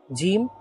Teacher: জিম জিহ্বার মধ্য উপরের তালুর সাথে